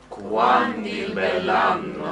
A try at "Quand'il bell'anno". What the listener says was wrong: You have to do two. And you see how that makes it more expressive, more passionate when you put both accents in.